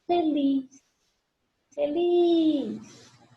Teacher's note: Feliz é uma oxítona, última sílaba tônica